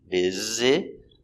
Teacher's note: the s is pronounced as a z